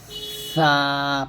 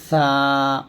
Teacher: বাতাস বের হবে আওয়াজ বের হবে হরফের উচ্চারণ পাতলা হবে এবং আওয়াজ নিম্নমুখী হবে জিহবার মধ্যখান তালু থেকে পৃথক হবে এবং